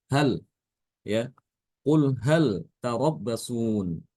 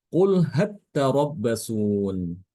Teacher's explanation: Lamnya itu ditasdidkan ke dalam huruf ta. Jadi lamnya hilang, masuk ke dalam huruf ta. Jadi bacanya qul hatta rabbasun. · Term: diidghamkan lamnya